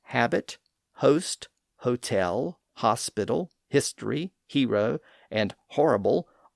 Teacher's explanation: French words like habit, host, hotel, hospital, history, hero, and horrible all acquired an h sound at the front because that's the way they were spelled even though the h's had been silent in French